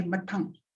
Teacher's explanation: In the above, ma voiced bilabial nasal is followed by the central short unrounded lax vowel between half closed and closed positions. The vowel is followed by unexploded voiceless denti alveolar plosive.